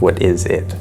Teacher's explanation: here, a WH question, we're gonna go down at the end